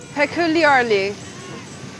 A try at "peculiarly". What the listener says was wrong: They did well.